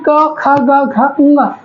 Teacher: गला हमारा कंठ क्या होता है, अवरुद्ध होता है, रुकता है, फिर झटके से हवा निकलती है।